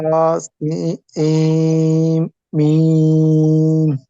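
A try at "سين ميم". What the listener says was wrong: সিম, এখানে গুণনাটা আপনার শোনা যায় না। সিম।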